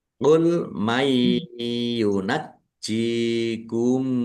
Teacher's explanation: Nun sukun bertemu dengan huruf ya, idgham bi gunnah, masuk dengan mendengung, yaitu mendengung ya ditahan biar tampak mendengungnya.